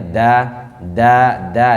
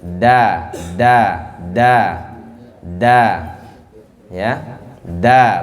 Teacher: ujung lidah bertemu dengan pertemuan antara gusi dan gigi ya usul sana ya Allah pangkal gigi itu ya usul